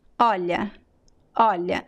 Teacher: So the stress of the first word is at the beginning.